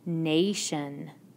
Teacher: is in our first syllable with the a i pattern Nation the long a sound is in the first syllable